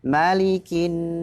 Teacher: Nun tasydid jangan lupa ditahan sejenak dengungan gunnah